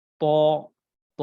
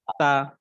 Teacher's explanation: যখন আপনারা ত উচ্চারণ করবেন, চেষ্টা করবেন মুখটা একটু গোল করার জন্য, আর যখন তা উচ্চারণ করবেন তখন চ্যাপ্টা করে ফেলবেন, অর্থাৎ হা করবেন বড়, যাতে করে চ্যাপ্টা হয়ে যায়। · তটা অলওয়েজ মোটা উচ্চারণ হবে, ত, ত। আর আরেকটি হচ্ছে তা, তাটি সবসময় একটু পাতলা বা চিকন উচ্চারণ হবে